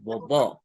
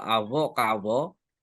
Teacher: bunyi frikatif bilabial yang memang ada dalam bahasa Punan gitu. Itu hurufnya eh, huruf V ya seperti dalam bahasa Inggris ya, V gitu.